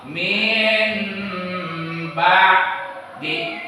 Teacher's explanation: menggantikan suara nun mati atau tanwin dengan suara mim. Ketika nun mati dan tanwinnya bertemu dengan satu huruf, yaitu huruf ba. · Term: ikram